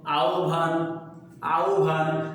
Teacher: যদি এই হয়ের সাথে বফলা যুক্ত হয় তাহলে মনে রাখতে হবে এখানেও হয়ের উচ্চারণ লোপ পাবে, হয়ের উচ্চারণ লোপ পাবে এবং থাকবে হলো ব। আর যেহেতু ব থাকবে আর এটা আবার মহাপ্রাণতা দান করবে, কাজে এটার উচ্চারণ হয়ে যাবে ভ। · তাহলে এই যে আহ্বান, তাহলে শব্দের শুরুতে আ, এরপরে এই যে হয় ভ, হয়ের সাথে বফলা হওয়ার কারণে উচ্চারণ হলো ও আর ভ, এ হলো ও আর হলো ভ, এই আকার আর এই ন, আহ্বান, আহ্বান।